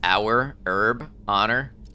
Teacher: H kind of disappears in English words.